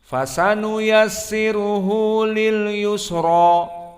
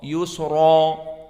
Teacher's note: Yusra maka dibaca dengan tafkhim ra, yusra.